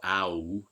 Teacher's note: this is a glide from again low to high vowels within the back part of the vowel space